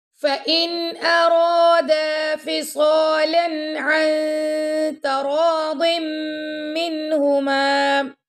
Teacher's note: اب یہاں پہ ارادہ، یہاں پہ دال ساتھ الف ہے اس کو لمبا کریں گے، را کو موٹا پڑھیں گے · ٹھیک ہے، ذالک. فَإِن، اب یہاں نون ساکن کے بعد آ گیا حمزہ تو یہاں پہ ہم اظہار کریں گے